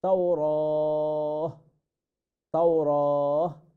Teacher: এখানে হা বলে আমরা এখানে থামবো, তাওরাত বলে নয় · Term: তায়ে তানিস